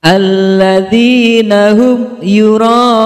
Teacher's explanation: Idhar syafawi, karena huruf mim sukun bertemu dengan huruf ya. Cara membaca huruf mimnya adalah jelas. · Mad tabi'i, karena huruf dal berharokat kasroh bertemu dengan ya sukun. Cara membacanya panjang 2 harokat. · Mad wajib muttasil, karena ada mad tabi'i bertemu dengan hamzah dalam satu kalimat. Cara membacanya dibaca panjang 6 harokat.